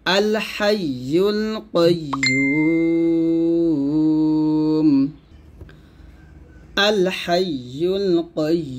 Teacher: আল হাইয়ুল কাইয়্যুম, এখানে যদি আমরা থামি তাহলে ইউতে তিন আলিফ টান দিয়ে মিমটাকে সাকিন করব, তাহলে হবে আল হাইয়ুল কাইয়্যুম। ইউতে আমরা তিন আলিফ টান দিব, তিন আলিফ টান দিয়ে মিমটাকে সাকিন করব, আল হাইয়ুল কাইয়্যুম আল হাইয়ুল কাইয়্যুম, এরকম।